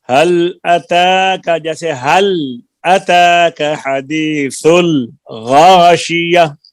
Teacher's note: لام میں قلقلہ نہیں ہے